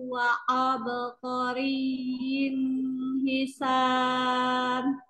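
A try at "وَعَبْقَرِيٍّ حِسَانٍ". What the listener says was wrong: Abqarin ini jangan ini terputus. Wa abqariyyin hisan. ya. wa ab ain wa ab wa ab ya. ya.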